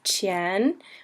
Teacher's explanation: the Chen is second tone so it's Chen which sort of sounds like a question